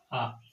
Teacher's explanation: विवृत का अर्थ होता है खुला हुआ, जिसके उच्चारण में मुख सबसे ज्यादा खुलता है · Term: विवृत स्वर